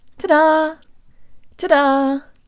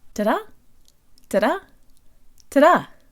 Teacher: D in this phrase is just like a flipped Russian air where the tongue flicks against the roof of the mouth